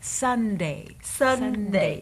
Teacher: So see the N and the D, your tongue is in the exact same place.